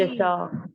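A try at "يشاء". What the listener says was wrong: जी हमजा के ऊपर जबर है ना, पेश नहीं है, ठीक है।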